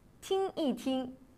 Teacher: Lorsqu'il est utilisé au milieu d'une duplication de verbes, il se prononce au ton neutre.